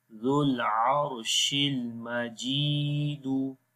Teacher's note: This is ya maddah now here. The kasrah is followed by ya sakin. That's why we long here one alif.